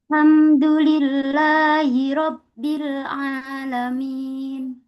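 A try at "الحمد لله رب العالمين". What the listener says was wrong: Ro-nya ditebalkan lagi. Ro. Ro. Itu masih tipis itu bunyinya. Tebalkan lagi.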